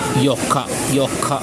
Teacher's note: So yo plus ka, yoka. Notice that I place some stress on the ka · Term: consonant doubler